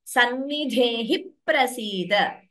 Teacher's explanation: Dhe is mahaprana. Then when we chant the first line and second line together, it would be sannidhehi prasida. So the p is doubling